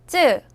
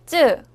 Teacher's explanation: 목에다 힘을 주고 즈 소리를 내면 쯔 소리가 나요.